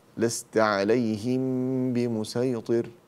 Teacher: هذا إخفاء شفوي، فأنا أخفي الميم عند الباء. لست عليهم بمسيطر، بمسيطر بالصاد.